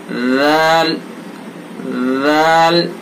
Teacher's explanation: زبان کی نوک اور ثناء علیا کا کنارہ، کنارے پر لگائیں گے. इसके अंदर भी नरमी होगी, सख्ती नहीं होगी।